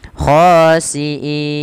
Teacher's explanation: Kita ambil yang 4 harokat yang tengah-tengah saja, tidak terlalu panjang dan tidak terlalu pendek. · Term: mad arid disukun